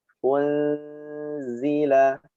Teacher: Huruf zai ujung lidah tempelkan pada gigi seri bawah bagian dalamnya.